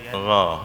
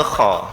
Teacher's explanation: Ghain nafasnya tertahan, kha nafasnya keluar.